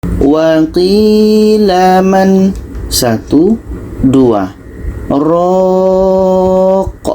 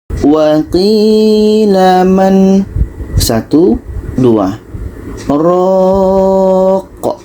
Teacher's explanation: Sekarang kita ambil satu dalam mushaf Madinah ini. Jadi pada man ini kita berhenti 2 detik baru kita lanjutkan dengan ra. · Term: saktah